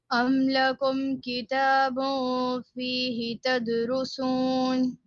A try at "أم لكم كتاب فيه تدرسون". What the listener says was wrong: Don't stretch the he again.